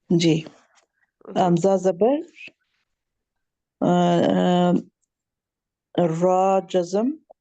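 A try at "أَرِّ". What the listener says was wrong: نہیں نہیں اس سے کہیں حمزہ زبر را جزم ار را زیر ری ہاں آپ نے اس کو پھر حرکت کے ساتھ نہیں نا آپ نے پڑھا اس کو حرکت کے بھی ساتھ یہ اس کے ساتھ بھی پڑھنا ہے نا آپ اتنا پڑھ کے آگے چلے گئے ہیں نا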